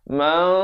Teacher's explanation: diberikan lantunan pada akhir kerana diakhiri dengan huruf qalqalah